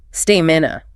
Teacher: Learners often stress the middle saying stamina. The stress is definitively on the first syllable.